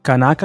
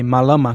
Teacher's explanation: aqui nós temos apenas um stress group perceba que a sílaba tônica fica na penúltima sílaba